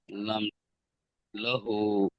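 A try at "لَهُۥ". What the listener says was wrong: লাহু, আরো বেশি টান করতে হবে।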